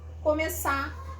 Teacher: existe a possibilidade de eu simplesmente não pronunciar esse R final